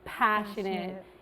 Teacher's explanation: with the multi- syllable words like passionate we put an emphasis on the first one